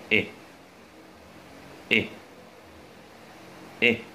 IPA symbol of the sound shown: ɪ